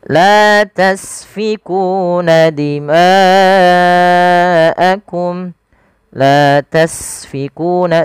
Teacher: Agar sempurna alirkan nafasnya. Karena sin punya sifat saofir.